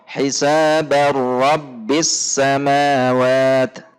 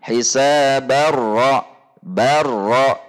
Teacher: tanwin dilebur baik zat maupun sifatnya kepada huruf ra, dan karena huruf ra tidak memiliki sifat gunnah, maka di sini terjadi idgham bila gunnah atau tanpa gunnah.